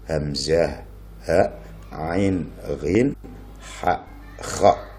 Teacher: Yang dimaksud huruf halak adalah huruf yang suaranya keluar dari tenggorokan, makhrajnya keluar dari tenggorokan. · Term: huruf halqi